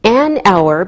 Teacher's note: we don't pronounce the h so it sounds like a vowel sound